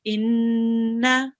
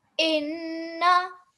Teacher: there would be a ghunna for about 2 seconds. Inna.